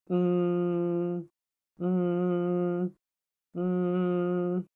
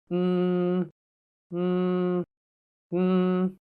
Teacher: The nasal is a voiced sound, so you should feel vibrations in your vocal cords. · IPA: /m/